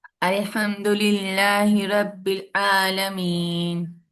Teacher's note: رب العالمین میں آئین کو لائٹ کرتے ہیں، ہلکا پڑھیں